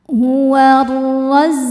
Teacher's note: ro dibaca tafkhim karena berharakat fathah. Cara bacanya roho ditebalkan.